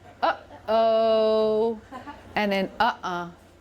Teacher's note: It's the stop, the glottal stop, as in uh-oh